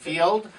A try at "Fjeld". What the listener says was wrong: Fjeld. Yeah, and then you said Field.